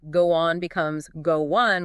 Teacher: go one with a W sound linking the two words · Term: connected speech